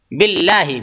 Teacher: اللہ کے لام کو باریک پڑھیں گے، موٹا نہیں کریں گے، تفخیم نہیں بلکہ ترقیق